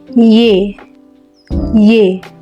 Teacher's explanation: semivokal ini terjadi jika artikulator aktifnya Tengah lidah dan artikulator pasifnya langit-langit keras bunyi yang dihasilkan y y sekian untuk video kali ini saya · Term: semivokal mediopalatal